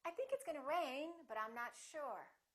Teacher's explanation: If I say it the second way, with my intonation going up, with the pitch going up, it sounds like something else is coming, like I'm not finished speaking.